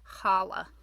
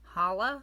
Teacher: I didn't learn Hebrew till 4th grade. So I tend to kind of fall back on like a soft H sound, challah, even though that's technically not correct